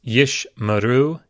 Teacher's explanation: The first Sheva follows a short vowel. It's closing that syllable, so you don't pronounce it. Yish. The second Sheva is the second in two consecutive Shevas, and so it is pronounced yish maru.